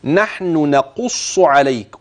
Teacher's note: نحن آخرها نون وأول نقص نون، فانتبه لبيان هذه من تلك